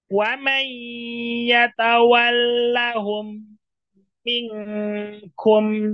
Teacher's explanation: apabila mim yang pertama Sukun dan mim yang kedua dia berharakat maka bacanya dileburkan sehingga mim yang kedua menjadi bertasdid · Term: Idam Mimi